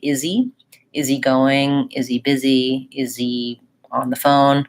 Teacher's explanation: we tend to leave that H off in cases like saying is he.